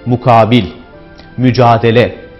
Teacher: Uzun A sesi farklı hecelere kaydığında vurgu da o hecelere kayar. Mesela mukabil, mücadele gibi kelimelerde vurgu uzun A sesinin olduğu harflerdedir.